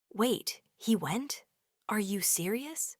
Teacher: If your voice rises at the end, it instantly becomes a question